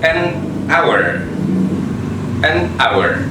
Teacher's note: Dalam pronounce-nya huruf H atau H itu tidak di-sounded, tidak disuarakan. Berarti jadi an hour.